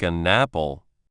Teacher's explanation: the n sound at the end of n smoothly goes into the a sound at the start of apple. It is not really an and then apple. · The N sound acts like a bridge between the two words.